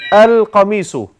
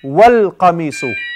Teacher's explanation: If you put just one letter before, wal, you go directly to the lam.